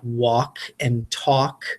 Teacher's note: words that have ALK in them, like walk and talk, because the L is completely silent